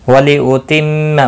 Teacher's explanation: میم مشدد پر غنہ ہوگا، باقی کسی بھی حرکت والے حرف کو کھینچنا نہیں۔